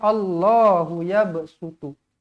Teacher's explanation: Allahu nampak huruf ba qalqalah sughra dibaca melantun.